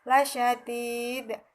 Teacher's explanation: Lasyadid terdapat hukum bacaan qalqalah kubra karena ada huruf qalqalah yaitu dal yang terletak di akhir ayat atau akhir kalimat, sehingga cara membacanya harus dipantulkan secara tebal